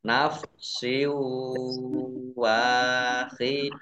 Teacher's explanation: Nah, kasroh tanwin bertemu dengan huruf wawu sama idgham bi gunnah. Masuk dengan mendengung, yaitu mendengung wawu.